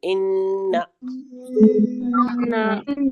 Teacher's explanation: हम नाक में आवाज को नून की रोकेंगे।